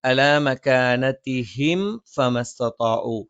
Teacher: അലാ മകാനതിഹിം ഫമസ്തതാഉ സുക്കൂനുള്ള മീമിന് ശേഷം ഫ വന്നു, വ്യക്തമായി ഉച്ചരിക്കണം. അവ മീമിനെ പൂർത്തിയായി ഉച്ചരിച്ചതിന് ശേഷം മാത്രം ഫ ഉച്ചരിക്കുക